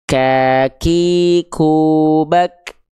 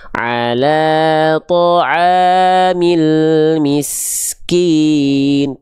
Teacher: Ada percikan nafasnya tapi nggak berlebihan